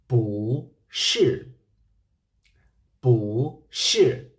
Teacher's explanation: it is a fourth tone so the adverb bu have to be changed into second tone